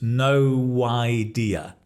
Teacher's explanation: No idea, we add a w sound because it's 2 vowels.